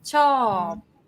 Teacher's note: that syllable no tone marker low class consonant long vowel ชอบ get falling tone